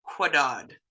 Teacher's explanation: it makes the same sound as the regular K except it's got that floating W so you're going to be blowing it out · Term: k-rays W